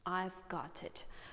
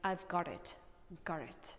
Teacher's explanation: So here, if you have heard, there is the letter T, and when this letter T is somewhere in the middle of the word or somewhere at the end or between some two words, American people prefer to transform it closer to R